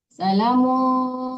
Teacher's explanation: jangan diidharkan tapi didengungkan diikfakan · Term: ikhfa